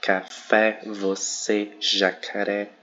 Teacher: a gente tem as oxítonas na última, que é a última sílaba tônica, então os as só as últimas sílabas tônicas que vão ser acentuadas.